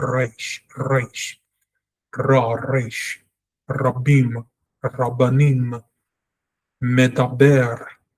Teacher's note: Reish, usually translated as R in English, is the 20th letter of the alphabet and is pronounced in our videos, or their videos rather in this case, and not ours, as an alveolar flap or trill, like the Spanish or Arabic R sound